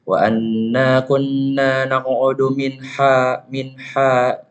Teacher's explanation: Di sini terdapat nun sukun bertemu dengan huruf ha kecil. Ini kalian bacanya adalah izhar, nama hukumnya adalah izhar halki atau kalian harus baca jelas.